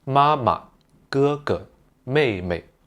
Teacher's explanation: remember the neutral tone as just ending the syllable shortly. · if I listen hard I think they are on the third tone. They're just a very very very short third tone. · All of the second syllables are in the light tone.